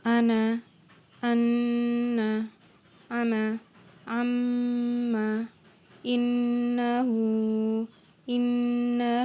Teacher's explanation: suaranya ditekan ditahan dua harokat dan berdengung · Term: Nun tasydid